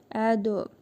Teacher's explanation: Ə. Dəl hərfinin üzərində cəzm var. qalqalə edərək tələffüz edirik.